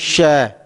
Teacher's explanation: जब आप इनका उच्चारण करते हैं श, सीटी सी बजती हुई महसूस होती है।